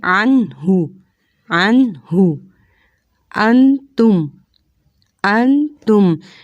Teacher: نون کا مخرج ہے کہ زبان کا کنارہ ہے اور اوپر والے دانتوں کے مسوڑے ہیں، ان سے نون ادا ہوگا